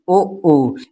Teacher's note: आप दोनों को ओठों क्या करते हैं, सिकोड़ लेते हैं। ठीक है, जब सिकोड़ते हैं तभी क्या है, ऊ की जो उच्चारण निकलता है। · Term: ओष्ठ